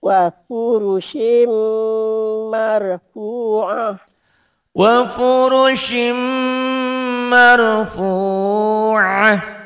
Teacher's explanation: tanwinnya baca satu, masuk ke mim karena dia idgham bigunnah